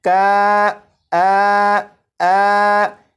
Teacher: تو کاف اور نون کے درمیان جو آواز ہے کا آ، یہ الف مخرج سے ادا ہو رہا ہے